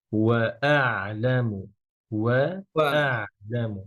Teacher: ওয়া পাতলা হামজাও পাতলা আইন পাতলা কিন্তু লেটার গুলো বিভিন্ন জায়গা থেকে যেমন ওয়াও ঠোঁটের গোড়া হ্যাঁ · কিন্তু লেটার গুলো বিভিন্ন জায়গা থেকে যেমন ওয়াও ঠোঁটের গোড়া হ্যাঁ ওয়াও দুই ঠোঁট থেকে এরপরে হামজা একদম বটম অফ দ্য ট্রুথ এরপরে কি আইন মিডল অফ দ্য ট্রুথ